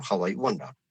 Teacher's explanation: You are putting the stress on wonder, not on I, and therefore how I wonder.